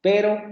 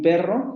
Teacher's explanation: las secuencias de fonemas son prácticamente las mismas a excepción de la vibrante que en el primer caso es simples y en el segundo caso es múltiple · difieren por el modo de articulación uno es simple y el otro es múltiple y este rasgo es el que genera la oposición en fonológica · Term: vibrante simple, vibrante múltiple